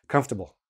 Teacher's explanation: I don't pronounce the r, I barely pronounce table. · I squeeze it all together, I take out the vowels.